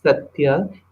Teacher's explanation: So what is happening because of ya, the ta gets geminated. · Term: gemination